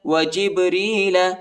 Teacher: با کو جھٹکے کے ساتھ پڑھیں گے، حروف قلقلہ کا حرف ہے